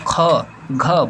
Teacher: ख घ बोलिए तो हमारे मुख से हवा ज्यादा मात्रा में निकलती है महा प्राण मतलब होता है हवा महा मतलब ज्यादा ज्यादा हवा